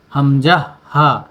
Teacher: আমাদের গলার একদম শুরু, হলকের শুরু থেকে